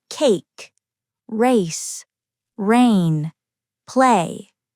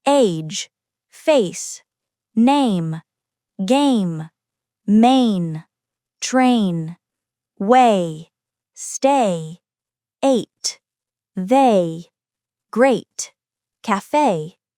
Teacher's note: This diphthong begins with the mid front vowel /e/ and glides toward the high front vowel /i/. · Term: diphthong A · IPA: /eɪ/